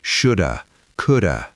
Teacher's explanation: If you are waiting to hear the word have, you will miss it. You just hear that little h sound. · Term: reduction